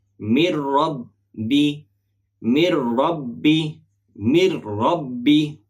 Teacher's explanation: নুন সাকিনের বাম পাশে র অক্ষর পাইলে র এর উপরে তাসদিদ ধরে গুন্না ছাড়া পড়িবে